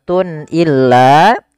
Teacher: Kemudian pada lafal tun illa, di sini ada izhar halqi, yaitu suara tanwinnya harus dibaca dengan jelas karena ketemu dengan huruf hamzah. Dan ini kita namakan dengan izhar halqi.